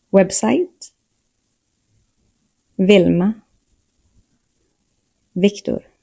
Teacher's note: V and W sound the same in Swedish. Both are pronounced like the English V.